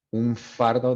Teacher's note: they say there's like a labiodental nasal